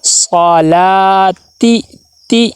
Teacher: تا کے نیچے زیر ہے، زیر کو معروف ادا کرنا ہے. صلاتی تی ہم.